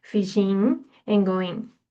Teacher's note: The G dropping at the end of ing verb forms